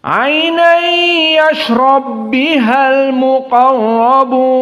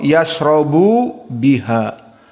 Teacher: Kilahuma mutaharrikan. Keduanya dalam keadaan berharokat. Namun diidghamkan, ini dia al-idgham al-kabir.